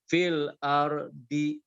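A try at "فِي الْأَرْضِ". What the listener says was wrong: Oke, nah sekarang I-nya hilangkan. Fil ard. Bisa cara latihan pertama bisa disebutkan dulu harokatnya. Fil ardi. Fil ardi. Nah, nanti setelah terbayang cara bacanya baru I-nya nanti hilangkan. Fil ard. Fil ard.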